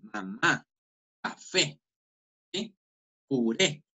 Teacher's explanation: uno siente que el acento prosódico, hace una entonación mucho más fuerte hacia la última sílaba, la palabra se considera aguda. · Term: agudas